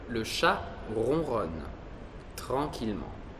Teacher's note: Si pronuncia R nel fondo della gola.